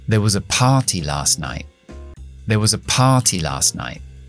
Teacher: There was a party. No acentuó nada hasta que no llegó a party.